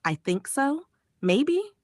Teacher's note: Fall rise intonation. The voice goes down a little then up. It often shows uncertainty or hesitation.